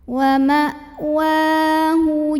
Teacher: Jadi makin kita tekan makin gak keluar bunyinya. Wa ma wa mad asli atau mad tabi'i karena ada baris fathah tegak di atas huruf waw. Bacanya panjang 2 harokat.